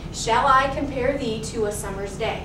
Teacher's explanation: unstressed stressed unstressed stressed unstressed